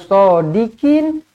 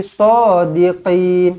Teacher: huruf qaf di sini kena tekankan dekat anak tekak ni